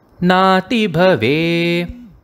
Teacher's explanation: In the word nati bhave, the bhave is often brought in a low pitch.